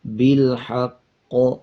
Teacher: قاف کے اوپر شد ہے، مضبوطی کے ساتھ قاف کو ادا کریں گے اور پچھلے الفاظ کے ساتھ ملائیں گے، جب وقف کریں گے تو اس پہ قلقلہ کیا جائے گا